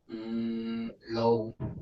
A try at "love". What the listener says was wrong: You need to make your pronunciation of this word more of a short U sound, ah. So drove, love, woke, whole, okay? Yes, love has a if you spelt it how it sounds, it would be spelt like that, okay? Love.